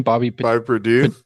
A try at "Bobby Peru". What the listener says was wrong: Peru, like the country. Purdue. Just adding a D in there for no reason.